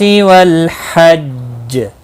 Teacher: حج جیم ساکن پڑھا جائے گا وقف کی صورت میں، اس پر قلقلہ بھی ہوگا ، مشدد ہے اس لیے تھوڑا قلقلہ خوب ہوگا۔ والحج قل